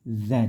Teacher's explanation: tidak Da tapi dza dikasih angin